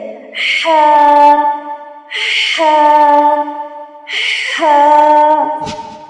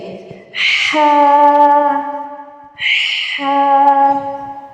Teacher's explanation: تو ہا دیکھتے کہاں سے ادا ہوتا ہے، حلق کے درمیان سے۔ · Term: وسط الحلق